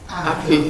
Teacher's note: if you have a word that starts with H in English, in Jamaican you drop the H